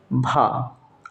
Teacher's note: हिंदी की स्पर्श घोष महाप्राण ओष्ठ व्यंजन ध्वनि है